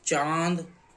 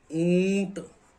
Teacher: ये नाक और मुख से मुख और नाक से इनका उच्चारण होता है। तो मुख से अधिक हवा निकलती है। नाक से कम हवा निकलती है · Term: अनुनासिक